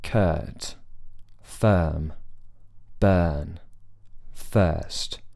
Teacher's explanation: lips are relaxed they're not grounded they're not spread just relaxed the tongue is resting in the middle of the mouth